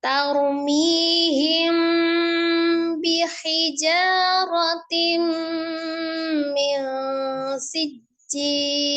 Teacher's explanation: Ada mim sukun bertemu dengan huruf ba, dihukumi ikhfa safawiyah. Jadi diikhfakan disertai dengan dengung yang sempurna, disamarkan disertai dengan gunnah yang sempurna.